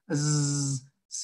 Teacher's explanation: Z sí vibra, ¿verdad? Porque las cuerdas vocálicas vibran.